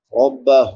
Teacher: ہا ہے اقصی حلق سے، حلق کے آخری حصے سے جو سینے کے ساتھ ملا ہوا ہے وہاں سے ادا ہوتی ہے۔ ہا کے اوپر الٹا پیش ہے، کھڑی زبر کھڑی زبر الٹا پیش کو ایک ایک الف برابر لمبا کرتے ہیں۔